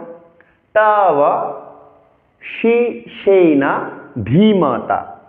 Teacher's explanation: ধকে মহাপ্রাণ উচ্চারণ করতে হবে চাপ দিয়ে।